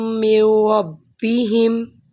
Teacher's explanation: میم کو را سے ملائیے اور جو نون ہے اس کی آواز کو حذف کر دیجئے